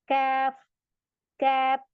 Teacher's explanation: अब जो ये बीच में आपको लाइन नजर आ रही है, ये यहां से हमारा ये वाला काफ अदा होगा। ये जबान हमारी ऊपर उठेगी और इन दोनों के दरमियान में लगेगी, यानी सख्त तालु और नरम तालु के बीच से ऐसे उठेगी। कैफ, कैप। इस वजह से ये बारीक हो जाता है लेटर।